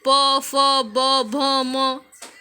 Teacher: अब प वर्ग जो है वो होठ से स्पर्श करते हैं